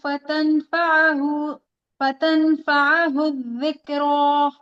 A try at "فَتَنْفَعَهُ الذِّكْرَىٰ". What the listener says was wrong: काफ को हिलाए नहीं, इसमें सिर्फ हमस होगा। ज़िक्रा।